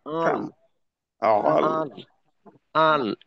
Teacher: এখানে যদি আমি বলি আল, আল আল, আল, এই আওয়াজটা নাকে নিলাম। আওয়াজ নাকে অর্থাৎ নাকি আওয়াজ, অনেকে দেখবেন কথা বলার ক্ষেত্রে প্রত্যেকটা আওয়াজ নাকে যায়।